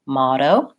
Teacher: I'm not saying a strong hard close D motto it's light I just touch up and release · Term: flap T